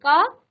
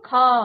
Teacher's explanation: महाप्राण व्यंजन जिन वर्णों के उच्चारण में वायु की मात्रा अधिक होती है वे महाप्राण व्यंजन कहलाते हैं और हिंदी वर्णमाला के प्रत्येक वर्ग का दूसरा और चौथा वर्ण अब उच्चारण कीजिए क अल्पप्राण ख अब देखिए क में कम वायु निकली